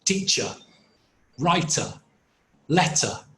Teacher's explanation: so look at the pronunciation of these words in non-rhotic English teacher doesn't end with an R it ends with a schwa